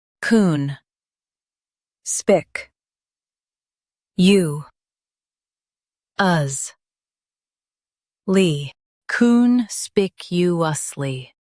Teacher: Stress spike and keep you smooth.